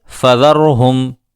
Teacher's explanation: فذرہم میں را ساکن ہے، اس سے پہلے زبر ہے، یہاں را کو پر کریں گے